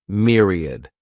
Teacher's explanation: this word has three syllables and the stress is on that first syllable Mir sounds like Mir Myriad a myriad is a very great